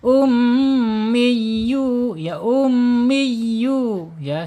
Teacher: mengalir melalui tenggorokan sampai ke mulut saja, tidak boleh masuk ke hidung, anginnya atau udaranya atau makhrajnya gitu. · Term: mad tabi'i